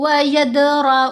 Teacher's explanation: व यदर दाल पर कलकला करेंगे